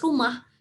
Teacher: biasanya H ketika itu berada di akhir kata, itu biasanya hanya angin lalu gitu ya, artinya tidak terdengar jelas